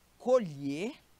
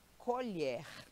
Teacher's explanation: o verbo colher o o é fechado e o substantivo que aquele artefato que você usa para botar comida na boca é aberto